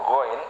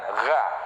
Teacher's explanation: Terus huruf gho, ya kan, gho, ya, bukan gha tapi gho. Nah, harus kita arahkan ke langit-langit atas.